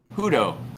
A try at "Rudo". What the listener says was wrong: Rudo. Rudo. Like there's a rolling of the R at the start.